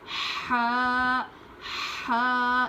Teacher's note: اس کی آواز حلق سے نکلنی چاہیے. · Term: بڑی ہا